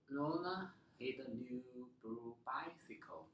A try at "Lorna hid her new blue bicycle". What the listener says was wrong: Can you make this word longer? Because this is the action. This is the verb. So this should be longer than the other words.